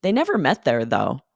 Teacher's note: you are hitting though a little stronger to emphasize the contrast